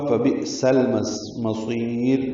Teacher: हमज़ा साकिन झटके से अदा होगा